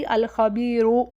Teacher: मैं रॉ को मोटा कर दूँगी वस्ल करते हुए, वाइल कॉन्टिन्यूइंग।